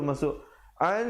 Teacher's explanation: hukumnya idgham bi gunnah, nun mati bertemu nun, jangan lupa dengungkan dua harakat